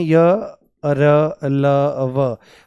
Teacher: सारे के सारे अंतस्थ व्यंजन सघोष होते हैं